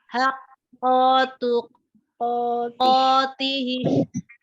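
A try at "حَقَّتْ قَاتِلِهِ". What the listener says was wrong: Oke, tapi qaf yang pertama itu tidak panjang. Coba bacanya gimana?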